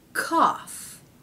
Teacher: cow it's cough cough so we have the a vowel and somehow an F consonant has crept in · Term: aw vowel